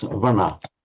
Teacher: Note here the Sanskrit word vrana, meaning wound, and in Pali, as you'd expect, all that happens is that the r drops out, giving us vana